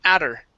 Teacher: or because her is afterwards and i can drop the h i could say adder and pronounce that t like a flap t